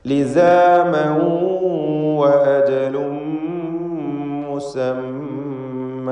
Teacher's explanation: ലിസാമൻ എന്നതിലെ തൻവീനിന് ശേഷമുള്ള വാവിൽ ലയിപ്പിച്ച് ഇദ്ഗാം ബിഗുന്ന നൽകി ഉച്ചരിക്കുക.